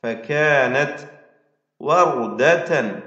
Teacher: തൻവീനിനെ പൂർണമായും ഇഖ്ഫാ ചെയ്ത് അവ്യക്തമാക്കി മണിച്ചുകൊണ്ട് ഉച്ചരിക്കണം